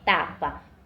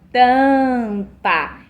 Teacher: Porém, quando eu coloco aqui, perto da letrinha a letrinha M, essa vogal, ela não vai ser mais considerada como oral, ela vai ser considerada como uma vogal nasal. E por isso, o som da vogal vai ser modificado e também o significado da palavra.